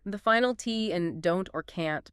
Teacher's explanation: the final T in don't or can't before another consonant might vanish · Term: final consonants